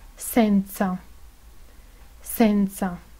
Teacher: La S española es la S italiana. Tiene sonido sordo en posición inicial seguida de una vocal.